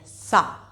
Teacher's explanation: जो सा का उच्चारण स्थान है वो दंत मूल होता है